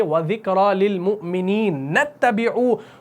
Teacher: تو للمؤمنین کے نون کو اس تا کے ساتھ ڈائریکٹلی ملایا جائے گا، اس کیا کہتے ہیں، اس حمزہ کو نہیں پڑھا جائے گا.